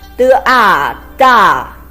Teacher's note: It's a combination of de and a with the fourth tone.